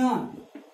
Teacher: अकुहा विसर्जनीय नाम कंठा से, क वर्ग में आता, इसलिए इसका उच्चारण स्थान क्या हो जाएगा? कंठ भी है और नासिका भी।